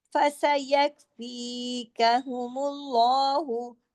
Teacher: فسا یک، اب یا کاف کے ساتھ جڑا ہوا ہے. فسا یک فی، فی کو دو حرکات کھینچنا ہے، باقی پیچھے والے حروف ایک ایک حرکت کھینچیں گے